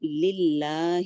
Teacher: لام جلالہ لائٹ رہے گا کیونکہ اس سے پہلے لام پہ کسرہ ہے. للہ لام جلالہ لائٹ لیکن 2 کاؤنٹ تک جائے گا.